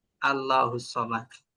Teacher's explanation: আল্লাহ শব্দের লামের আগে যখন জব অথবা পেশ থাকবে তখন ওই আল্লাহ শব্দের লামটাকে ল অর্থাৎ মোটা করে করতে হবে